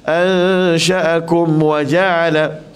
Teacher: Matikan mim betul-betul tanpa kita dengung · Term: izhar syafawi